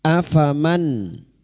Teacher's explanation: Nun sukun dibaca jelas tanpa mendengung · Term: idhar halqi, idhar halki